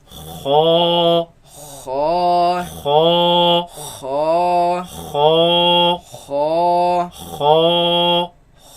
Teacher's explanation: You can feel it in the back of the mouth. It comes from the roots of the tongue, root of the tongue against the uvula